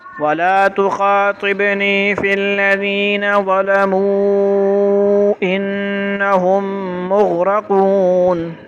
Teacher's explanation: इसमें एक चीज़ का ख्याल करना है, तो ज़लमू को जब हमने इन्नहुम के साथ मिला के पढ़ना है तो फिर मद करेंगे